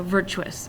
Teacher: as we accent the correct syllable we can sometimes cheat and we can kind of blend two syllables together so virtuous it's almost like Tris